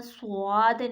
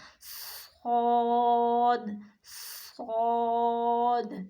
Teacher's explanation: اور خوب صاد کو ادا کرتے ہوئے خوب موٹی آواز میں پڑھنا ہے، اور ہونٹوں کو گول نہیں کرنا، سواد نہیں کرنا، صاد، صاد، اسے خوب موٹی آواز میں پڑھنا ہے، بھاری آواز میں۔